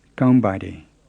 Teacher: the open nasal sound isn't so obvious when there's some other word following it